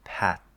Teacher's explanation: the dental T, which is flatter, usually more on the teeth